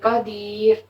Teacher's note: را ساکن سے پہلے یا ساکن ہو تو پھر بھی را جو ہے باریک پڑی جائے گی. اب دیکھیں یہ را ساکن ہے نا اور اس سے پہلے یا ساکن آ رہا ہے تو پھر ہم ادھر جو ہے را کو باریک پڑیں گے.